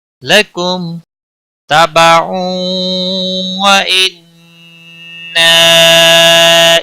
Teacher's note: تنوین کے بعد حروف یرملون کا واو آیا ہے، ادغام با گناہ ہوگا